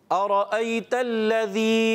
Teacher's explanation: हमज़ा वाज़े करेंगे, तस्हील नहीं करेंगे